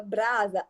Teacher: a letra S representa o fonema Z na palavra brasa